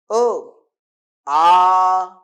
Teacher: आ वाढला ना, सूर लांबवला, उच्चार करायला वेळ लागला.